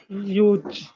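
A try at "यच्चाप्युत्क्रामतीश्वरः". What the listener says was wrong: यूत नहीं ना आएगा, प्युत प्युत, प्य बोलो, प्यास वाला, प्यास, प्युत प्युत।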